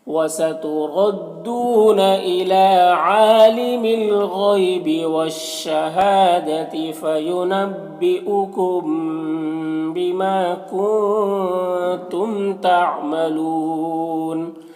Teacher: میم ساکن کے بعد با ہے تو اخفاء شفوی ہوگا، غنہ اور اخفاء کے ساتھ میں پڑھیں گے